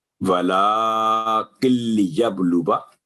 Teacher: الف سائلنٹ ہے تو واو کی آواز لمبی نہیں ہوگی، 1 سیکنڈ وا درمیان میں پڑھیں گے